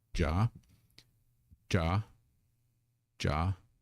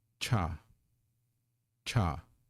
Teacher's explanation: that puff of air that you feel on your hand that is the Hallmark of a an aspirated consonant